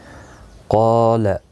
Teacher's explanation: قال، قاف اور الف دونوں پر پڑھے جائیں گے. قاف مستعلیہ ہے اس لیے پر پڑھا جائے گا. مستعلیہ کے ساتھ میں جب الف پہ آتا ہے تو وہ بھی پر پڑھا جاتا ہے.